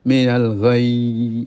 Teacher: ghayy ditekan kemudian dikasih rikhwah mengalirnya suaranya